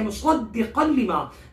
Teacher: زا کو سختی سے پڑھیں گے، مصدقا لما کے صاد کو موٹا حروف مستعریہ میں سے، فیٹ لیٹرز میں سے، مصدقا لما. دال کو تھوڑا سا رک کر سختی سے پڑھیں گے